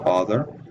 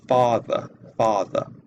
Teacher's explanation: the long a in certain words are pronounced back and sometimes uh rounded uh so uh we have the word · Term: New York accent